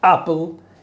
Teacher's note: You say apple, you jump into the water, so to speak, to start the vowel a, you make this glottal stop.